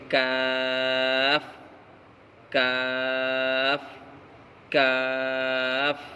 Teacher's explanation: کاف کا مخرج زبان کی جڑ سے کچھ اوپر کا حصہ اور اس کے مقابل اوپر کا تالو